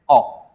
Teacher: इसका उच्चारण आ और ओ के मध्य होता है